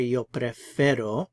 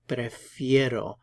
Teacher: we don't say yo preferro we say prefiero that e becomes a diphthong so it's an ie